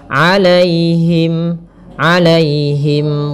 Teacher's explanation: di sini ada ya sukun yang didahului dengan fathah. Ini kita namakan dengan bacaan lin. Maka lembut dalam pelafalannya.